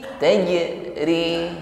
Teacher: jim sukun pantulkan dengan ringan.